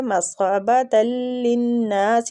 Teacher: نون مشددہ غنہ کریں گے اور کھینچیں گے الف مد کی وجہ سے